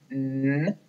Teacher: N is a consonant sound, and it is voiced, and it is also nasal because it goes through our nose.